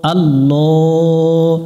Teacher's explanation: আল্লাহ শব্দের ডান পাশে জবর আছে এজন্য লামটাকে মোটা করে পড়তে হবে